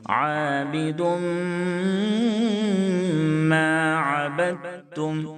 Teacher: عابدم، دال کے اوپر 2 پیش کی تنوین ہے، اس کے بعد حروف یومن کے 4 حرفوں میں سے میم ہے، اس لیے ادغام ناقص ہوگا، تنوین کو میم سے ملاتے ہوئے غنہ کریں گے